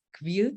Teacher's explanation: And then the W everywhere just shifts to a V.